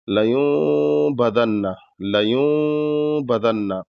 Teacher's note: ہے، تو اس کو دونوں کے بیچ میں اس طریقے سے غنہ کرنا ہے کہ نون بھی ہو اور ہلکا سا میم کی بھی جھلک ہو